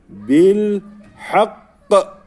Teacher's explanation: Bir de lye bağlıyoruz bil burada duracak var Normalde Hakk Ama hak diye durmamız gerekiyor kalkale yaparak şeddeli olduğu için sert kalkale bil hak bu şekilde durmamız gerekiyor C bilak okuyalım Fe uzatmam